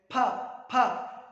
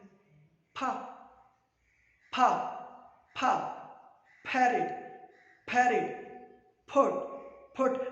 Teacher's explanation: तो हम फोनेटिकली फा साउंड को कहेंगे कि ये बाइलेबियल भी है और साथ प्लोसिव भी है।